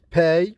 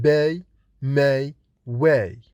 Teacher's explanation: The sound p is voiceless, like in pay, but it is voiced in b and m and w.